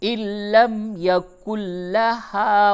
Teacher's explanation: نون ساکن کے بعد لام ہے، ادغام بلا غنہ ہوگا